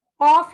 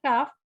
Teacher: قاف اور کاف ان کا مخرج سیم ہے, لیکن قاف موٹا ادا ہوگا, کاف باریک.